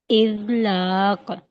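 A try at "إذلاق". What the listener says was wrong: लाम मोटा नहीं करें, बारीक करके पढ़ें, लाम को दोबारा पढ़ें।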